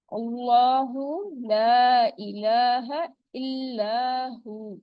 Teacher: یہاں پر حمزہ کی ساؤنڈ کو آپ نے پرومیننٹ رکھنا ہے، ٹھیک ہے. اور لام جلالہ ہے، اس سے پہلے زبر آ رہا ہے تو لام جلالہ کو ہم موٹا پڑھیں گے. کھڑی زبر ہے تو کاؤنٹ اسٹریچ بھی ہوگا.